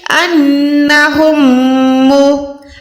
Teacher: میم ساکن کے بعد میم آئے گا تو یہاں پر بھی آپ نے گننا کرنا ہے